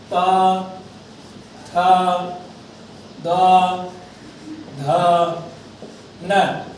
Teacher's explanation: एषां वर्णानाम् उच्चारणस्थानं दन्ताः सन्ति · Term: दन्त्य